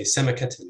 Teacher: If it doesn't have a long vowel, so you'd say semakatin with stress on the first syllable